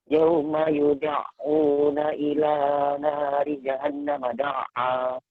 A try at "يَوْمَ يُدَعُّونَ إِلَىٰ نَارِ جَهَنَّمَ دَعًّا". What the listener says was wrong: Nah, ketika nun tasydid, jangan terburu-buru ya, disempurnakan dulu gunnahnya, nah, kemudian dilanjutkan. Yauma yud'una ila nari jahannam da'a.